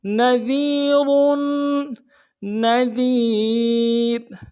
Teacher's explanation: نذیر میں نون کو نون سے ادا کریں گے, ذال کو باریک ادا کریں گے, یا کے ساتھ ملانا ہے.